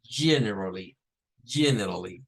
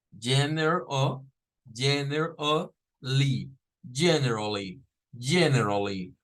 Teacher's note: Con un schwa. Miren, la ER que queda ahí en medio es un schwa